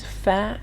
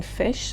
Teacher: the lower lip touches the Upper Front Teeth creating the friction needed to produce the sound